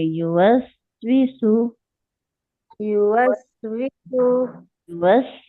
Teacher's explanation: सीन की आवाज एकदम झटके से नहीं रोकेंगे, इसमें हम रिखावा करेंगे।